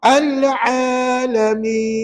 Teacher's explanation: Al tadi dibaca Dua harakat namanya mad asli